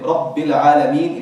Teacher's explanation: If you were to say Rabbi, you've missed one of the ba, because there's two bas, right? You stop on one and then you start the other. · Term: shadda